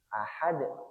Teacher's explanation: Karena dal ini adalah huruf qalqalah, sekali lagi harus dipantulkan. Ahad. Ingat, ahad di ujung lidah.